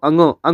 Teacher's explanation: अंगो है साथियों जो अनुनासिक व्यंजन है तो ये क्या है इसमें नाक और मुह उच्चारण करते समय इन दोनों का उपयोग होता है